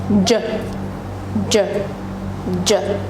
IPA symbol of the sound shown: dʒ